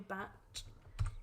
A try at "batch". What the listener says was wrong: Why are you putting so much emphasis on the ch at the end? But you were going batch. You did a bit.